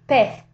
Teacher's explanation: they would normally say pez, like with your tongue between your teeth, interdental sound.